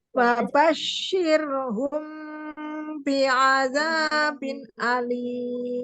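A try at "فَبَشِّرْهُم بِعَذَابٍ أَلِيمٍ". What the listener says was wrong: Nah, itu loncat. Bi'adzabin alim. Kerasa loncat nggak? Kalau ibarat orang lagi ngedengerin, lagi nyata-nyata itu langsung cok aja. Loncat itu ketara. Fabashirhum bi'adzabin alim. Bi'adzabin alim.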